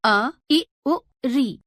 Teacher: इन स्वरों के उच्चारण में सबसे कम समय अर्थात एक मात्रा का समय लगता है। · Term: ह्रस्व स्वर